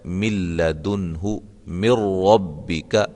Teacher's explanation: نون ساکن کے بعد لام آ گئی ہے اور نون ساکن کے بعد را آ گئی ہے، اس کو ہم ادغام کریں گے لیکن غنے کے بغیر. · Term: ادغام بلا غنہ